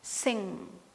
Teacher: the back of your tongue, it will be tending towards or touching your soft palate